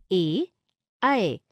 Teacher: जिन वर्णों का उच्चारण कंठ और तालू से होता है उन्हें कंठ तालव्य कहते हैं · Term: कंठ तालव्य स्वर